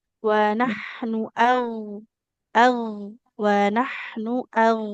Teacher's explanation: huruf gain ini harus tebal dan mengalir suara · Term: huruf ghain